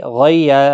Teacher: غی یالین ہے، غین مستعلیہ کا حرف ہے، پور پڑھنا ہے